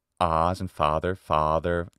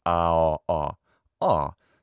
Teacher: Now, in addition to ah, as in father, a lot of English speakers have a rounded version of ah. So let's round the lips with that one